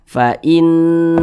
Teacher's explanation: Cara membacanya itu digunnahkan. Digunnahkan itu ya didengungkan. Jadi suaranya itu kita tahan, kita panjangkan sejenak. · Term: gunnah musyaddadah